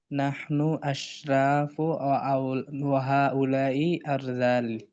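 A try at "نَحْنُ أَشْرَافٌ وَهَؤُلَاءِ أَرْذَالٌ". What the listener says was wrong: নাহনু আশরাফুন ওয়া হাউলাই আরজালুন, দুই পেশ। নাহনু মুবতাদা, আশরাফুন খবর, হাউলাই মুবতাদা, আরজালুন খবর। এটা নাহনু আশরাফুন ওয়া হাউলাই আরজালুন।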